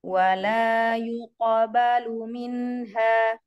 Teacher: Qalqalah pada huruf qaf, qalqalahnya yang tebal ya.